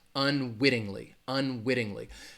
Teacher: Unwittingly is the word, the stress is going to be on that wit.